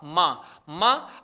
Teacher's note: माँ के 2-2 उच्चारण स्थान, नासिका और ओष्ठ